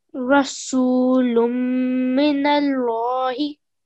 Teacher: 2 second nasalization on the mean mushaddad. Okay, and you very nicely made this into a thick lam.